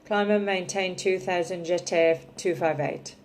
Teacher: that'd be speaking in monotone totally flat with no word stress at all